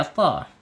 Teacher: Harus pakai to ya, to. Jadi lidahnya terangkat ya, to. Ujung lidahnya menyentuh pangkal gigi